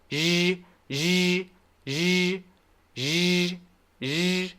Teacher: So my teeth are together tight, okay? And I'm making the sh sound, which is pretty easy to make. Sh, sh, sh, like that sound, okay? But I'm adding my voice. So I'm doing plus sh.